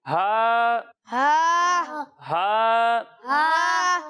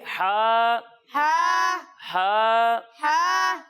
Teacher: اسے حلق کے درمیان والے حصے سے پڑھتے ہیں